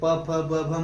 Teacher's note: और ओष्ठ जो होता है जो हमारे होठों के द्वारा बोला जाता है, जैसे प फ ब भ बोलते हैं तो हमारे दोनों होठ सट जाते हैं, इसलिए इन वर्णों को ओष्ठ वर्ण कहा जाता है।